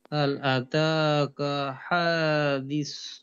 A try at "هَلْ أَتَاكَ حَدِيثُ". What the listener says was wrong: হা লম্বা হবে না, দি লম্বা।